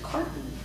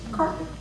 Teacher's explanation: So not really a T, not really a D, that's a stop T.